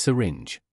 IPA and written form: ˈsɪrɪndʒ (syringe)